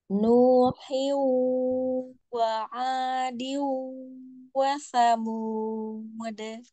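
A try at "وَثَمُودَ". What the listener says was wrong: Samud. D-nya jangan mud. Enggak. Samud.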